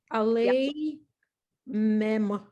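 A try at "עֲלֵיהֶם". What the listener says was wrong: that backwards C is a H.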